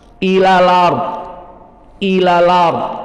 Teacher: Hamzahnya dihilangkan dan harokatnya yang fathah ard dipindahkan ke lam. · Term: naql